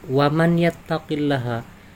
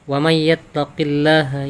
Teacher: yattaqillaha I keep ketika kita dibaca satu persatu waman yattaqillaha namun ketika dihukumi Idgham Bighunnah nun sukun bertemu ya maka dibacanya lebih identik kepada huruf ya Jadi tidak boleh dibaca wanita Hai Man tapi May Hai wamayatakilaha